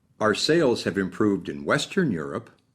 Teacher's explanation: by stressing Western the second sentence makes it sound like our sales have improved in Western Europe but not elsewhere in Europe